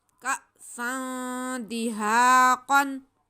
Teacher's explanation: हमज़ा है साकिन है, इस पे झटका लगेगा। सीन दो ज़बर सन, का सन, दाल ज़ेर दी, का सन दी, हा अलिफ ज़बर हा, का सन दिहा, क़ाफ दो ज़बर कन, का सन दिहा कन, का सन दिहा कन।